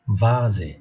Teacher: দুটো ঠোঁট একসঙ্গে হবে না, লোয়ার লিপ, নিচের ঠোঁট, উন্ড আপার টিথ, উপরের দাঁত একসঙ্গে হবে